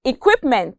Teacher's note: consonant sounds together as a whole the sound is produced by placing the back of our tongue against the roof of our mouth and with our lips rounded at the same time